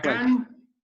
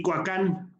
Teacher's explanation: la diferencia entre una K no labializada y una K labializada